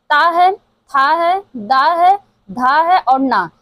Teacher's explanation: ये जो त वर्ग है दंतव्य से उच्चारित होता है। इसका उच्चारण स्थान जो है वो दंतव्य होता है।